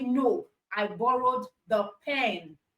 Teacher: so there is stress on the pen to clear the misunderstanding that it was a book that you borrowed so it's usually to correct misunderstanding usually to correct misunderstanding so